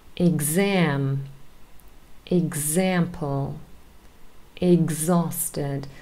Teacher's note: sometimes we have words spelled with x and there is a g z sound in here for the x